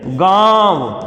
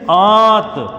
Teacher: जो मूल विशेषता इसकी है कि नाक से बहुत कम सांस निकलती है और मुख से अधिक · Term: अनुनासिक